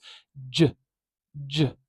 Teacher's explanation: an africat it's in the africat family of sounds J J it's a voiced sound so we've got vibration at the throat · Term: affricate